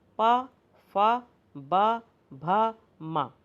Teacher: अब देखिए इन व्यंजनों को बोलने में हमारे दोनों होंठ आपस में स्पर्श करते हैं, इसलिए इसको ओष्ठ व्यंजन कहा जाता है।